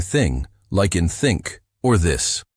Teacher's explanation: your tongue comes out just a little bit, between your upper and lower teeth. You blow gently while saying thing, like in think, or this. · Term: TH sound